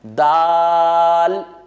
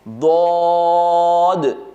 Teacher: دال کو پتلا پڑھنا ہے، دعات کو پر پڑھنا ہے